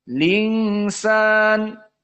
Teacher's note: Hamzahnya dihilangkan dan harokatnya kasroh dipindahkan ke lam. Jadi lingsan. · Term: naql